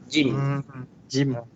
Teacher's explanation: Tempat keluar huruf dia ialah tengah-tengah lidah kita, tengah lidah. Dia angkat kena dekat langit-langit kita yang dekat atas. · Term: huruf jim